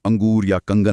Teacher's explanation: अनुस्वार मतलब बिंदु का उच्चारण करते समय हवा सिर्फ नाक से निकलती है